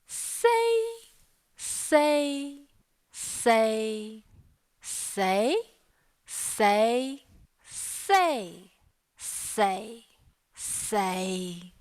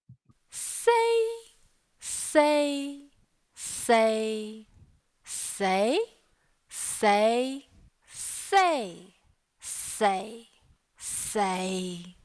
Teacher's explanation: all of the tones here are in modal phonation